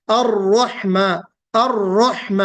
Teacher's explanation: الرحمن الرحیم میں را کی جو ادائیگی ہے اس میں را پڑھتے وقت منہ گول کر دیتے، الرحمن، الرحمن، رحمن نہیں بلکہ الرحمن الرحیم، ہے نا.